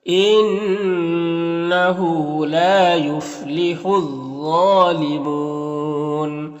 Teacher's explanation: ضا حروف مستعلیہ میں سے ہے، پر پڑھیں گے، کھڑا زبر ہے جو الف مدہ کی طرح ہوتا ہے۔ نون میں وقف کریں گے تو نون کا زبر سکون سے بدل جائے گا اور اس سے پہلے واو مدہ ہے تو مد عارض وقفی ہوگا تو اس طرح سے پڑھیں گے۔